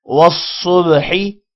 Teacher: صاد کو موٹا پڑھیں گے، با پر جزم ہے، جب بھی حروف قلقلہ میں سے کسی بھی حرف پر جزم آ جائے وہاں پر قلقلہ کرتے ہیں، والصبحی۔